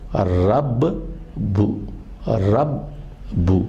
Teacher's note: با کی آواز 2 مرتبہ نکل رہی ہے، لیکن پہلا با ساکن ہے اور دوسرا وہ متحرک ہے۔ رب بو کہیے یا رب بی کہیے یا رب با کہیے، کوئی فرق نہیں پڑتا، زیر زبر پیش کا فرق ہے، لیکن پہلا حرف ساکن ہے، دوسرا متحرک ہے۔ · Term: مشدد